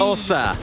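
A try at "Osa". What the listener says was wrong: Yeah, it's more Ossa, but with a slightly shorter O.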